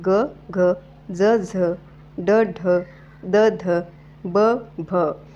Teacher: ही मृदू व्यंजने म्हणत असतानी कंपन होते